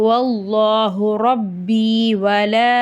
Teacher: சின்ன மத் இருக்கு மூணுல இருந்து நாலு அலிஃப் வரைக்கும் நீட்டி ஓதணும்